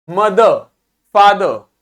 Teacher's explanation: आधा सा ही बोलना है, पूरा रा नहीं बोलना है, रा को आपको खा जाना है, रोल कर देना है।